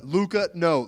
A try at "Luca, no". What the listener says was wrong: No, he sounded way more fucking deadpan than that. It's like, Luca, no.